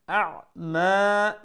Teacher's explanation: make sure the first is the hamza then is the ain so first from the bottom of the throat and then middle of the throat so shift the gear very quickly because they're both quite near